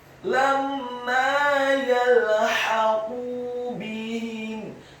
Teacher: Kata yalhaqu, huruf ya-nya dibaca tipis, fathah 1 harokat, huruf lamnya dibaca sukun, huruf ha-nya dibaca tipis, nyaring dan halus, fathah 1 harokat. Kemudian huruf qaf-nya dibaca tafkhim, tebal, dhammah 2 harokat karena setelahnya ada wawu sukun. Kemudian kata bihim, huruf ba-nya dibaca tipis, kasrah 1 harokat, huruf ha-nya dibaca tafkhim, tebal, kasrah 1 harokat, dan huruf mim-nya dibaca sukun kemudian diwaqafkan.